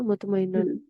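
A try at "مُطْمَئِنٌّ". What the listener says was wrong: बस सही है मुतमइन्नुन, ठीक है, शद आ जाएगा।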